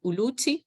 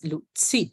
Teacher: where Zulu uses t as in uluti, Swati has lutsi, so with an affricate.